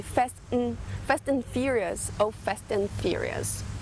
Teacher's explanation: Na prática, como eles querem falar muitas coisas em curto tempo, então eles acabam deletando certas letras ou mesmo ignorando certos sons. Então, ao invés de falar and, vai ficar an, fast and, ou fast in, só o som do N